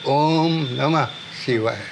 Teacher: हम ओ और मु के बीच में प्लुथ लगा देते हैं। ओ और मु लंबा उच्चारण करते हैं।